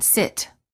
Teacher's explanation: The lips are slightly parted and relaxed. The tongue is also relaxed and high, but not as high as for the E sound. The sides of the tongue touch the upper back teeth. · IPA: /ɪ/